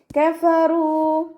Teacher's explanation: മഖ്റജ് വരുന്നത് മേലെ മുൻപല്ലിൻ്റെ അറ്റം താഴെ ചുണ്ടിൻ്റെ ഉൾവശത്ത് വെറ്റായ ഭാഗത്ത് വെച്ചിട്ട് ഉച്ചരിക്കുക